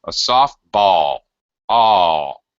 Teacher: Even though it's one syllable, I'm going to drag out the sound a little bit and go high, then low. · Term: little high-low hook